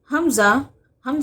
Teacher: हमजा भी हा की तरह हलक के निचले हिस्से से अदा होता है